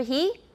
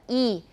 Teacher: So H has no fixed place of articulation at all. It completely depends on the following vowel because it basically is just blowing out air. It's just aspiration.